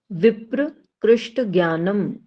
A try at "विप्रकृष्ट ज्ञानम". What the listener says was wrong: देखो इसको अलग अलग पढ़ रहे हो ना तो इसका उच्चारण थोड़ा सा अलग हो जा रहा है, इसका भाव अलग हो जा रहा है। विप्र मीन्स होता है पंडित, और इसका विप्रकृष्ट बोलोगे ना तो भाव अलग हो जाएगा। विप्रकृष्ट ज्ञानम।